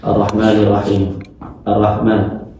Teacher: [berdehem] Nah, kesalahan umum yang sering terjadi melafalkan lam dengan jelas membaca arrahman arrahman ini merusak hukum idgam. Kemudian membaca ra ganda terlalu singkat seperti ra biasa tanpa tasydid